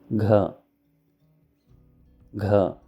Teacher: this is the aspirated GA sound used to write Sanskrit words